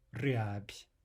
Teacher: There's a devoicing of a final soft B to a soft P